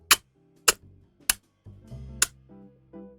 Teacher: the circle with a point in it is a labial click so this is made with the lips